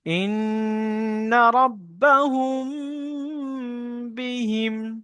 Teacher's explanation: মিম সাকিনের পরে বা এসছে, মিম সাকিনকে একালি পরিমাণ গুণনা করে পড়তে হবে, একে ইকফায়ে সাফাবি বলে। · নুন তাসদিদকে একালি পরিমাণ গণনা করে পড়া ওয়াজিব